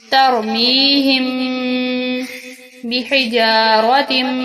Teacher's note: میم ساکن ہے اور اس کے بعد با آ رہی ہے، با، اور یہاں پر ہم میم پر غنہ کریں گے، پھر یہاں تا کے بعد میم ہے اور اس کو بھی گنہ کریں گے تنوین پر، اور یہاں میم نون ساکن ہے، نون پر بھی گنہ کیا جائے گا۔